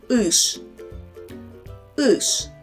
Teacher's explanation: Notice that no matter there is a soft sign after it, sound sh is always hard.